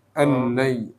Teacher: Lamnya nggak usah ditahan. Allai gitu langsung.